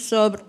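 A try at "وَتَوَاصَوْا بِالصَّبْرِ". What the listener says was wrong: Oh, enggak gitu sob, sober ya. Bukan sob mah sohib ya, sober ya. Pakai ro belakangnya jangan hilang.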